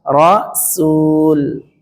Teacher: Kalau dia fathah, maka sinnya panjang, rasul. Dan ini bentuk tunggal.